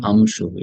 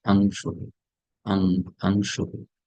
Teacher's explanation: That ang sound should come from the nose.